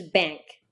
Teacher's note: This is an N produced with the back of your tongue instead of with the front.